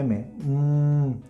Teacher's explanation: obstruyó con ambos labios el flujo del aire y el aire termina saliendo por la nariz y vibrando mis cuerdas vocales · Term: el sonido m